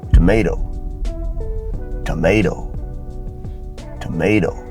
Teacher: need to hear the letter te so it becomes to and when you come to the last T it's unstressed it becomes a flap D sound